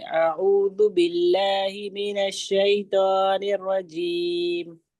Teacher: اس لیے ہم کو یہ دھیان رکھنا ہے کہ حمزہ اور ذال کی ادائیگی کو ہم جلدی ادا کریں گے اور عین کو کھینچیں گے · اعوذ اور لفظ اللہ کو باریک پڑھیں گے